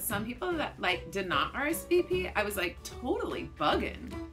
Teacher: at the end of your sentence, not only are you using those verbal filler words, but you're raising your pitch like you do when you're asking a question. And you're not asking a question, so that raise in pitch makes you seem clueless. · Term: high rising terminal